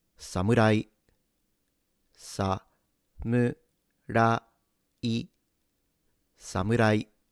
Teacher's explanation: So you go from low imagine it like these were notes in a piano. You start low s you go high m and then keep high. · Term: flat pitch